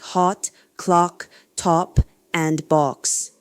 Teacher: The A sound in lot words requires an extremely low tongue position with wide jaw opening